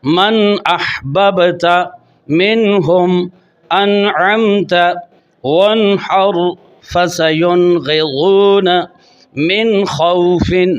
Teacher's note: یہ نون ساکن کے بعد 6 حروف حلقی حمزہ، ہا، عین، ہا، غین، خا بالترتیب آ رہے ہیں۔ تو لہذا ان تمام نون ساکن میں غنہ نہیں کرنا، ان کو ظاہر کر کے پڑھنا ہے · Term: اظہار حلقی